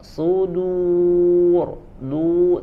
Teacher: du sudur huruf rnya baru dia tebal ya huruf dalnya tipis Shad tebal Dal dengan madnya dibaca tipis kemudian ada huruf ro setelahnya di akhir maka dibaca tebal